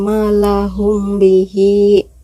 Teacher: Mim mati bertemu ba samar di bibir. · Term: ikhfa syafawi